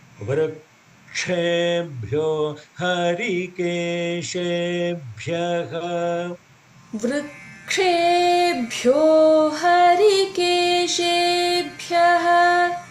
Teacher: Vrukshebhyo Harikeshebhyaha. The ksha has to be pronounced more as a little more force aspiration